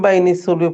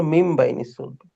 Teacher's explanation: নুন সাকিনের পরে বা এসছে এই জন্য ওই নুনকে মিম দ্বারা পরিবর্তন করে পড়তেছি আমরা